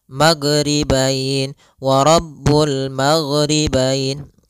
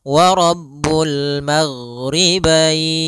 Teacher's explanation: huruf gain tidak ada sifat Qalqalah tidak ada sifat pantulan